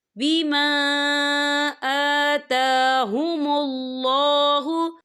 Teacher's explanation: यहाँ पे खड़ी हरकत है तो हम इसे 2 या 3 हरकत के बराबर खींच के पढ़ेंगे।